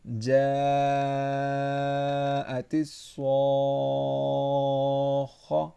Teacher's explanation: یہاں پہ صاد بھی موٹا ہے اور خا بھی، تو دونوں کو موٹا پڑھنا ہے